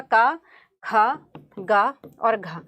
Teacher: इनका उच्चारण स्थान कंठ से होता है